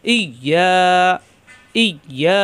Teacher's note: ইয়া ইয়া, ই মিলবে ইয়ার সাথে, আবার ইয়া জিব্বার মাঝখানে উপরে চাপ দিয়ে 1 আলিফ টান